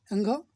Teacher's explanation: इसका जो उच्चारण करते हैं वो आवाज़ नाक से निकलती है, अनुनासिक बोला जाता है इसको, अनुनासिक। अंघ देखेंगे आप तो अंघ से कोई भी शब्द शुरू नहीं होता है।